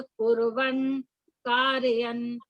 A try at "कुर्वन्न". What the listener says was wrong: ये कुर्वन्, ये सिंगल न नहीं बोलना, कुर्वन् ये वर्ड है, कुर्वन् प्लस न, कुर्वन्